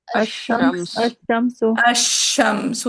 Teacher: ادغام کر رہے ہیں کیونکہ ادغام کریں کہ ہم نے الف لام کے لام کو ڈراپ کیا اور شین پہ شد لگا کے پڑھ لی